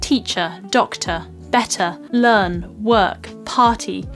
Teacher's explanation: non-rhotic R where the R sound is dropped off and replaced with just a vowel